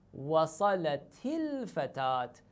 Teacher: you add an auxiliary kasra as an auxiliary vowel